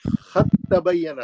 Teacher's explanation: اس مثال میں دال ساکن کی آواز تا ساکن میں بدل گئی, اور پھر تا ساکن تا مشدد متحرک میں داخل ہو گئی. ادغام متجانسین ہو گیا.